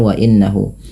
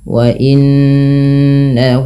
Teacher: tahan bunyi suara nunnya sepanjang dua harakat karena ia bacaan gunah